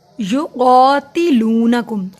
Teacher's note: نون زبر نہ ہوتا ہے، نہ نہیں میں نے پڑھا، یقاتلونکم قاف دو نقطوں والا موٹا پڑھا جاتا ہے